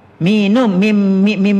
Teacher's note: kalau mulut rapat, itu ialah makhraj huruf mim